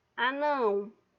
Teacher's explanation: O não é minha sílaba tônica e ele está no último, então eu digo que essa palavra ela vai ser oxítona.